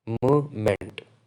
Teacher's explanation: we gradually lower our pitch move and after the second m our voice goes up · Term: fall rise intonation